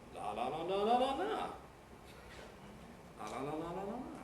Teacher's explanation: Yes, that's a rising head and a high fall.